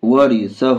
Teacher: ورثہ، ہاں الٹا پیش ہو، ہاں میں الٹا پیش ہے، الٹا پیش برابر ہے واو مدہ کے، اس لیے الٹا پیش کو تھوڑا کھینچ کر پڑھیں گے